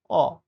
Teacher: আমার ঠোট কিন্তু খুব বেশি প্রসারিত হচ্ছে না